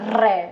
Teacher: र टकराने के बाद जीभ कंपन होगा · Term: लुंठित व्यंजन